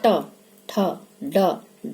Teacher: जीभ जो है वो सुकड़ के ऊपर को तालू में एकदम टन से लगती है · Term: टवर्ग